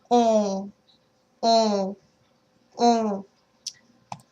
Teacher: As your lips close, the air will be forced into your nasal cavity, creating the on sound in French. Oh. So you have to make sure you're pushing the air up when you're closing your mouth to create the ooh sound.